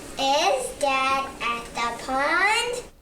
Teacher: I love the way your voice went up at the end. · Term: voice goes up